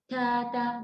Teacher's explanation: ta tetap ada hamsnya, tapi jangan berlebihan